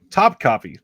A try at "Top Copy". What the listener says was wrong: No. Top Copy. It's the emphasis is on the second syllable. Yeah, your emphasis is on the wrong syllable. Top Copy.